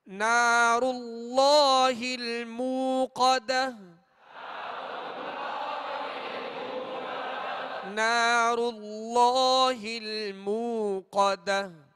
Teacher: اللہ عز و جل کے لام سے پہلے زبر ہے لہذا اللہ عز و جل کا لام پر یعنی موٹا پڑھا جائے گا